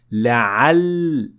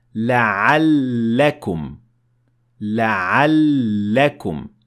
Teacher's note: the lam has shadda, which means that you're going to pronounce the lam 2 times